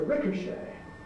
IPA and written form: ˈrɪkəʃeɪ (ricochet)